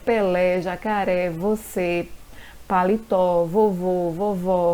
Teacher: Recebem acentuação porque terminam em A, E, O, ens e a sílaba tônica é a última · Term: oxítonas